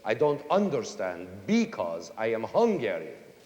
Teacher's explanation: almost all the words in it are accented on the first syllable